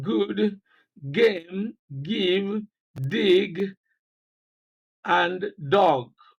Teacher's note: this consonant sound is described as a voiced velar plosive sound. It is represented by different letters of the alphabet, and it occurs in different written words as follows.